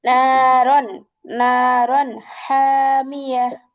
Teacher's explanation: নারন গুণনা হয়ে গেছে কিন্তু, কারণ এখানে আমরা জানি ইজহার আসছে, অর্থাৎ স্পষ্ট করে পড়বো।